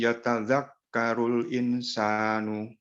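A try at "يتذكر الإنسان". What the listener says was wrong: Insan. Kalau mau berarti insan. Nunnya dikasihkan ikhfa Pak. Insan.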